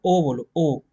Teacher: सामान्य स्थिति से उठ जा जैसे आप ओ बोलो ओ तो आपके जो पीछे वाला भाग है जीभ का वो ऊपर उठ जाएगा थोड़ा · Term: पश्व स्वर